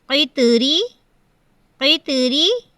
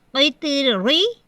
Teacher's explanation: قیطری، اگر ہم اسے موٹا پڑھتے ہیں، را کے نیچے زیر ہے، اگر ہم اسے موٹا پڑھتے ہیں قیطری، یہ طریقہ غلط ہے، موٹا نہیں پڑھا جائے گا۔ را کے نیچے زیر ہے تو را باریک پڑھی جائے گی